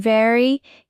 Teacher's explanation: your teeth touch your lip.